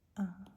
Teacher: I think in the word above, we have both a caret and a schwa.